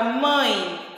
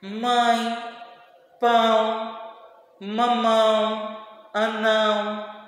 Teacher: esse som ele sai pelo nariz e pela boca · o som da vogal, né, no O ou A é nasal, ou seja, será emitido parte pelo nariz e parte pela boca